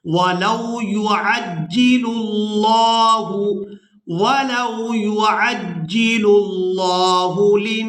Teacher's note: लफ्ज़ अल्लाह का लाम पूरा अदा होता है, यानी इसको मोटा पढ़ते हैं।